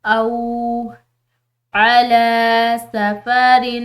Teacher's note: لام کے اوپر کھڑی زبر ہے تو ہم نے اس کو لمبا پڑھنا ہے، ایک الف کی مقدار